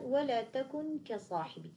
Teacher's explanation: عندما نريد أن ننطق بحرف الكاف المخرج سينغلق تماما، إذن هنا لن يمر الصوت من الفم، لأن المخرج أغلق، الصوت لن يمر لأن المخرج منغلق تماما.